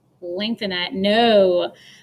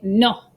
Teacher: when you say no in english we lengthen that no but in spanish we say no chop it short